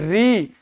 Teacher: तो आपकी जीभ लपाक से पहुंचती है आपके दांतों के जस्ट ऊपर वाले भाग पर जिसको कहते हैं मुर्दा।